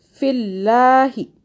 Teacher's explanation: اللہ باریک ہو گیا کیونکہ اللہ سے پہلے زیر آ گیا